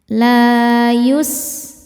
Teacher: Sinnya berdesis seperti suara ular karena punya sifat namanya shofir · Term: sofir